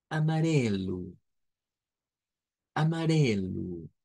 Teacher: es una r suave la que se utiliza en esa sílaba